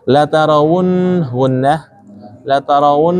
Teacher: La tarawun kita iringi dengung di sini. Ditahan dan diiringi dengung.